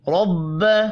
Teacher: را کو زبر کی وجہ سے پر پڑھیں گے